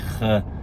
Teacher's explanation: So one is the kh sound, which is kind of it's like where you make the K sound in your mouth, but then you allow air to flow over and kind of like go over the tongue there.